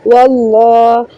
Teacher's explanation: लफ्ज़ अल्लाह को लाम को मोटा पढ़ेंगे